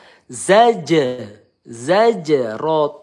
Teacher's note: zaj ketemu huruf qalqalah memantul ya qalqalah sugro